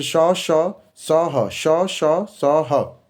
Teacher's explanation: उच्चारण अवयव के परस्पर समीप होने से श्वास घर्षित होकर बाहर निकलती है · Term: सघर्षी व्यंजन